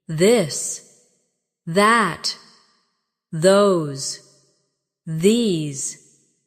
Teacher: your tongue touch your teeth lightly, but use your voice